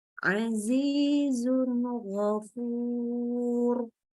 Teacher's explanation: dibaca jelas, nggak pakai tambahan gunnah, jangan didengungkan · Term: idhar halki